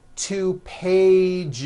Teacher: One page becomes two pages with that voiced Z.